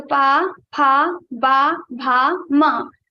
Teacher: Both the lips above and both the lips will touch each other and will produce the sound of pa varga.